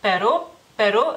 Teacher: la u es corta y sin acento